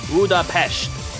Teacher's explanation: While the original Hungarian pronunciation is budapesh with an sh sound, the English convention retains the s.